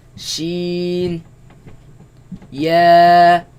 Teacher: they come from the middle of the tongue against the middle of the upper palate